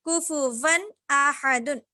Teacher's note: تنوین کے بعد حروف حلقی میں سے حمزہ ہے، اس کو ہم ظاہر کر کے پڑھیں گے